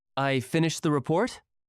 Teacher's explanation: Your voice went up at the end. It is called uptalk. Your pitch rises at the end of the sentence.